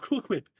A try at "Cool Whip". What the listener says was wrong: No, you're putting too much emphasis on the H. It's Cool Whip.